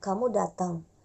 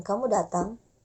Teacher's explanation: kamu datang dengan intonasi naik berarti bertanya